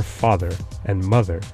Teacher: Germanic languages like English have fixed the stress accent to the first syllable, and this accent shift explains why the English equivalents of those words are father and mother, both stressed on the initial syllable